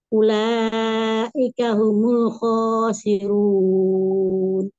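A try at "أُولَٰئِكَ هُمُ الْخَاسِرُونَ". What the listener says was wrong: Humul khasirun, khasi dan khasirun kepanjangan.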